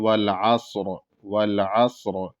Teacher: را کی آواز بھی ظاہر ہو اور وہ موٹا بھی ہو